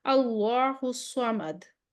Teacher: اللہ الصمد، اس میں جب ہمارے پاس دال پھر ہمارے پاس آ جائے گی، کلکلا لیٹر آ جائے گا، آواز پلٹے گی پیچھے